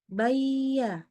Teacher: ya lihat pangkal lidahnya Biar kata ya Tengah lidahnya naik tetapi pangkal lidahnya enggak naik sehingga dia enggak tebal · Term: istifal